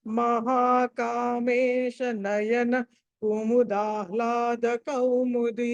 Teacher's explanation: నయనా దగ్గర బ్రేక్ చేస్తే దీర్ఘం వస్తుంది బ్రేక్ అక్కడ దీర్ఘం రాకూడదు